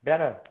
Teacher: Di sini T-nya itu hanya jadi glotal.